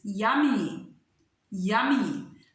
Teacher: The first Y makes Y sound, ya, but at the end it makes sound E.